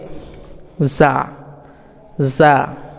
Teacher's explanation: জিব্বার আগা সামনের নিচের দুই দাঁতের গোড়ার সঙ্গে লাগিয়ে যা এটা আমরা উচ্চারণ করব